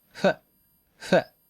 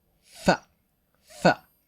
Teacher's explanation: the Japanese sound uses two lips we make a small space between them huh and blow English but uses the bottom lip and top